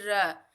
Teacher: जिनके उच्चारण में जीभ बेलन की भांति लपेट लपेट खाती, उसे आप लुंठित व्यंजन कहते हैं।